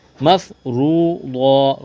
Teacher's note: را کو موٹا کرنا ہے، واو مدہ ہے 1 الف کے برابر کھینچنا ہے، صاد کو موٹا کرنا ہے، وقف کریں گے، 2 زبر کی تنوین کو الف سے تبدیل کریں گے۔